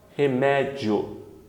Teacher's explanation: Porque a semivogal é fraca, a vogal forte, o som cresce. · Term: ditongo crescente